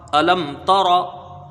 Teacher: میم ساکن کے بعد تا ہے یہاں پر تو یہاں پر اظہار شفوی ہوگا، یعنی میم کو جلدی پڑھا جائے گا۔